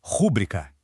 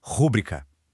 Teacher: O erro de prosódia clássico e que se ouve o tempo todo é jogar a força logo no início, falando rubrica.